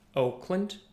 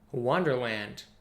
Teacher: the first word the last sound is just short but wonderland you're emphasizing that land